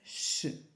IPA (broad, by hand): ʃ